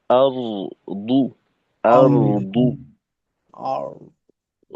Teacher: র এর আওয়াজটাকে মোটাভাবে চালু রাখতে হবে। দু এখানে অন্ততপক্ষে এতটুক দরকার যাতে করে দালের থেকে পার্থক্যটা স্পষ্ট হয়ে যায়। · রয়ের আওয়াজটাকে মোটা ভাবে চালু রাখতে হবে